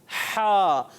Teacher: हा का मखरज होता है हलक का दरमियान वाला हिस्सा